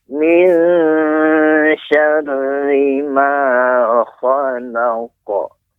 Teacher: Keluarnya daripada lidah paling belakang dan dia memiliki sifat tebal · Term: huruf qaf